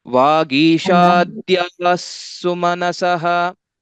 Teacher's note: When we tell it together, there will be a sandhi that occurs. Basically, the visarga will also change to the sakara.